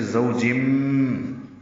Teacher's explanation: تنوین کے بعد با آنے کی وجہ سے اقلاب ہو رہا ہے۔ بہیج میں ہا اقصی حلق سے نکالیں گے، لمبا کریں گے، جیم ساکن پہ قلقلہ کریں گے وقفاً۔